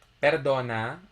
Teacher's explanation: that falls on top of the o okay berdon okay so the accent is on the second syllable